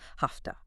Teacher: The v is a voiced sound. It's harder to say. So it becomes a soft f.